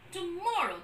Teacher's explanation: the syllable called more will have the falling tone because it takes the accent there